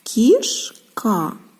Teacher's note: знаємо що і голосний звук і служить для пом'якшення приголосних тому у слові кішка к М'який приголосний ми його позначали позначили двома рисочками кі ш приголосний твердий к